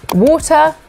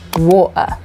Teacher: We either pronounce it as it should be with the T, or we replace it with a glottal stop.